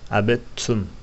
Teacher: Yani abettum değil de abettum. İki tane T okunur. Dal okunmaz. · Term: İdgamı mütecanisein